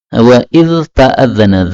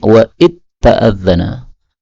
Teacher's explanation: dzal ketemu tak boleh idgham menjadi wa id ta'adzana